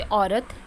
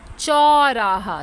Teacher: जब हम बड़ा मुंह खोलते हैं तो चौ यानी बड़ा औ आता है